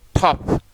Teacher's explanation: इस टे में एच की जो साउंड है वो ब्लेंडेड यानी मिली हुई या घुली हुई है